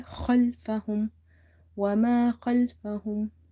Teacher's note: Kha is from the upper throat, also it's heavy